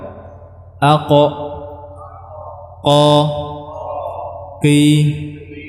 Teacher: lidah bertemu dengan langit-langit yang yang lunak dengan merapatkannya menebalkannya tanpa mengeluarkan udara yang banyak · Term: huruf q, huruf qaf